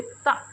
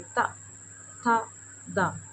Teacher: बोलिए ता, तो ऐसा लग रहा है जैसे हमारी जीभ जो दांतों से टकरा रही। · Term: दंत्य वर्ण